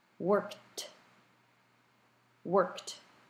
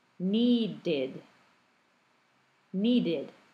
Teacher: hearing that t sound, as opposed to the ed ending that sounds like id